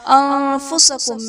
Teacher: أَنفُسَكُم میں نون ساکن کے بعد حروف اخفا میں سے فا ہے، تو یہاں پر اخفا کا قاعدہ ہوگا، یعنی نون ساکن میں ہم غنہ کر کے پڑھیں گے